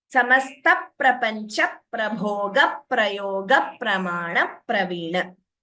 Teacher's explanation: Everywhere you can hear the p doubling, right? Beautiful dvitvam here.